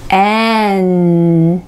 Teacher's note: 戻ってきた時にベロが口の上にタッチした位置で止まって息が鼻腔から出る感じになります。